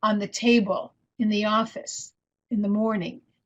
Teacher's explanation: just ordinary phrases and show that the function words are unstressed